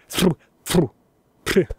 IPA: t̪͡ʙ̥